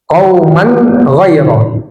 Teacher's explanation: tanwin yang bertemu ghain izhar, dibaca jelas tanwinnya